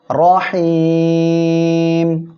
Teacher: আর এক আলিফ মদের পরের অক্ষরে ওয়াকফের কারণে সাকিন হওয়ায় 3 আলিফ টেনে পড়বো আমরা। তাহলে এখানে পড়বো রহিম।